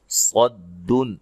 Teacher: صاد کو موٹا ادا کریں گے، نون تنوین کا اظہار ہے، غنہ نہیں کریں گے